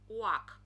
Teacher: образуется звук напоминающий у в произношении не принимает участие кончик языка а только работают губы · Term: губно губной